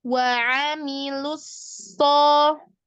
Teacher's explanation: Hati-hati di huruf lu-nya itu jangan tebal dulu baru ke sod ya. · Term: lu tipis